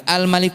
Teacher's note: berarti lamnya ada, berarti terbaca, sehingga namanya izhar qamariyah